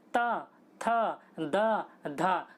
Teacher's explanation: बोल के देखिए आपकी जीभ जो होगी वो दांत पर टकराएगी, दांत पर बिना टकराए आप बोल नहीं सकते इनको, इसलिए इनको दंते कहा जाता है।